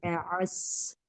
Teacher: sofirnya di sodnya. Ka'asfim ada suara desisnya.